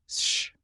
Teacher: The mouth does one action, not two. If you stretch the beginning of ship slowly, you do not get s followed by h. You get one continuous sound, sh.